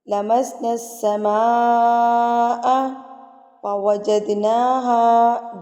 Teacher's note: جد پہ آپ نے قلقلہ کرنا ہے، اس کو آپ نے ہلا کے پڑھنا ہے. جد لفظ کو مار کے پڑھنا ہے.